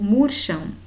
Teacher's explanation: em murcham perceba que o m ele tem som de u murcham então esse a e me constitui aqui um encontro vocálico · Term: ditongo fonético